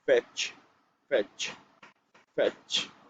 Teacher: This is a labiodental consonant